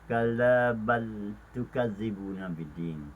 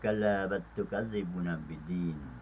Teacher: Dan pada ayat ke-9 bagi pertemuan lam mati dan ta yang berbaris di hadapan pada pertemuan ini, bal tukazzibun pada 2 kalimah, maka bagi bacaan riwayat Khalaf dan juga Khalad daripada qiraat Imam Hamzah, mereka idghamkan